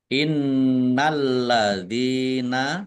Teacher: nun tasdid dibaca gunah atau mendengung ditahan agar tampak dengungannya. Lamnya dibaca double ada tasdidnya.